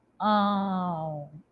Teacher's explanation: Então ela é considerada uma sílaba nasal né porque existe essa saída de ar da boca e do nariz